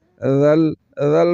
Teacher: کر پڑھیں گے ہا ذال کو لم کے ساتھ ملائیں گے ذل ذل پڑھنا ہے سل نہیں پڑھنا وگرنہ ذا پڑھا جائے گا جو کہ سیٹی کے ساتھ ہے